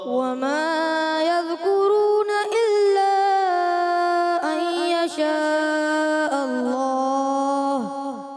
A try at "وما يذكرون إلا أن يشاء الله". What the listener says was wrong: این میں جو ہے غنہ پورا کرنا ہے آپ نے. دوبارہ پڑھیں.